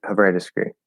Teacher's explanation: the word however in casual conversation can get quite reduced when unstressed could potentially sound almost like the verb hover